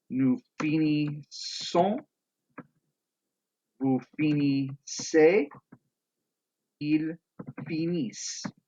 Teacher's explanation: We need to add in that consonant sound for the plurals, and it's going to be a S sound.